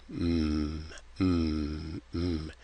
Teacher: you're going to stop the air and force it out of your nose m with both lips. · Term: nasals